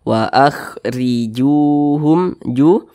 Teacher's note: Makanya ju ini dibaca panjang. Wa akhrijuhum mad tabi'i, panjangnya 2 harakat atau kira-kira 2 ketukan.